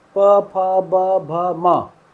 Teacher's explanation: किसी में जीभ हिली नहीं हिली, सिर्फ होंठ हिल रहे हैं। तो इसको कहाँ से बोला जाता है, ओंठ से।